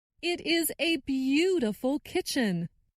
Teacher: stressed the word beautiful.